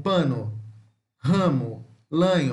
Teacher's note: Temos o A com o circunflexo, que ele é semiaberto, central, oral e não arredondado